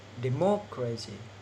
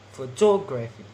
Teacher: stress on ante penultimate syllable